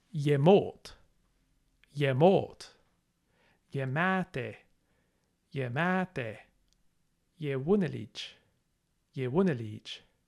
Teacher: This syllable is always unstressed, which means that the stress will always go on the syllable after the ye.